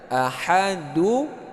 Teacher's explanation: nun tadi yang mati jadi sekarang kita hidupkan karena bertemu dengan hamzah wasal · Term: nun niswah